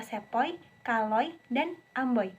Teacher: Bunyi ini dihasilkan dari vokal ee belakang separuh tertutup O yang mengeluncur ke vokal yang tertutup I. Bibir pada awalnya bundar lalu menghampar e menjelang akhir pengucapan. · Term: diftong oi, diftong OI